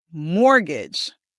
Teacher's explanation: The emphasis is on the first syllable. · The word is mortgage. And be very careful because the T is silent.